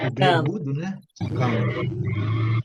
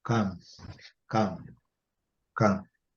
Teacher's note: O B mudo e o M fechando a boca.